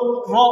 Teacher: جب ہم را ادا کرتے ہیں تو زبان کی نوک اوپر ٹچ کر کے نیچے آتی ہے، تھوڑی سی اس میں وائبریشن، تھوڑی سی لہر پیدا ہوتی ہے